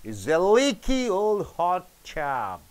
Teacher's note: Leaky and old is stressed.